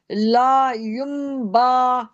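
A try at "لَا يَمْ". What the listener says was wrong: खींचना नहीं है लाम को। ला, ला युम नहीं, ला युम। खींच रही हैं आप। ला युम नहीं, ला युम बा।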